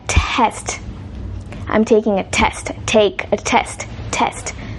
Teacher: you can hear or feel a puff of air coming out from their mouth